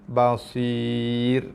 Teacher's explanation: So tebal, ra-nya nipis. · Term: Ra nipis